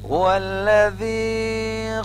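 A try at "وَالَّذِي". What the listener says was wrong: না কিন্তু, এটা হলো জাল, জানা জাল, জাল উচ্চারণ করতে হবে। দেখো আমি আবার উচ্চারণ করি,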